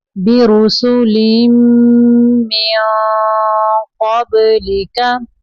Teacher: बा को कलकला करना है, क्योंकि बा कलकला हरूफ में से है